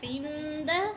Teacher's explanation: نون پہ ہم غنہ کریں گے کیونکہ نون ساکن کے بعد حروف اخفا میں سے دال آ گیا ہے